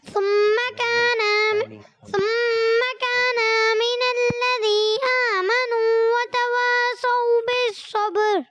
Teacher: کانا کے نون کو تھوڑا سا کھینچ دیا اور ثم میں ایک الف غنہ بھی کریں گے, اور وتواصوا صاد کو پر رکھنا ہے. آپ کا سا سے تبدیل ہو گیا.